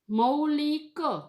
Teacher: ઉ જે છે એનો વ સંભળાય છે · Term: વનું ઉચ્ચારણ